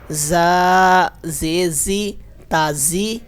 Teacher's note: یہاں پر زا پر ہماری سیٹی پیدا ہوگی کیونکہ یہ حروف صفیریہ ہے